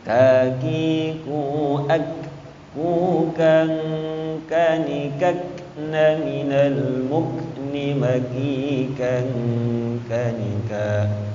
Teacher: Jadi dia makhrajnya itu di pangkal lidah menyentuh langit-langit atas.